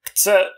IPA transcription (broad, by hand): kts